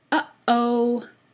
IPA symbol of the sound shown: ʔ